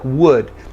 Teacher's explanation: It's not ooh, it's not wood, it's would. So as if you were going to do ooh, but you were a little bit low on energy, ooh, would. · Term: the other U